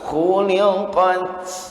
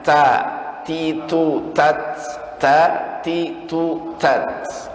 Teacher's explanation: ujungnya benar dihamaskan, udara sedikit keluar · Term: sifat hamasnya